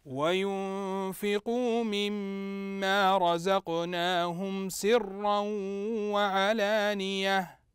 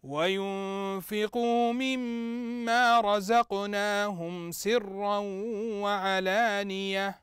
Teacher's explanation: الميم المشدده فتغني بمقدار حركتين